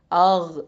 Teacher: கைன் வந்து அதனல் ஹல்க்கு. அதனல்னா மேல் தொண்டை. சரியா? மேல் தொண்டையிலேருந்து இந்த சவுண்டு வரணும்.